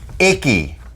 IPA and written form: ˈɪk.i (Icky)